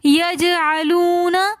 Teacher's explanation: واو ساکن ہے اس سے پہلے پیش ہے تو ایسی واو مدہ کہلاتی ہے، تو اس لیے ہم اس کو کھینچ کر پڑھیں گے